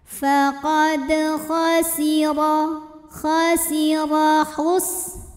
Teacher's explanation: Sinnya tipis, ada desis karena punya sifat yang khusus yaitu sofir, ada desisan seperti suara ular.